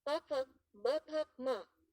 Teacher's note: ओष्ठ्य labial ध्वनियां जो होठों से उच्चारित होती हैं